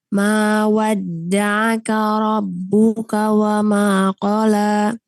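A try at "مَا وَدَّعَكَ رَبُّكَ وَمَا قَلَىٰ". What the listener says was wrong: Ma wadda'aka karo bukan koro ya. Wadda'aka rabbuka.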